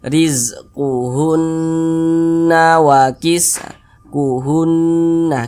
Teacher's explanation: cara membacanya digunahkan diunahkan tuh ya didengungkan jadi suaranya itu kita tahan kita panjangkan sejenak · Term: ghunah musyaddadah